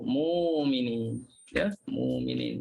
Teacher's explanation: oleh kerana waqaf maka hamzah yang kita nampak hamzah tu mati. Bila waqaf dia tukar jadi huruf waw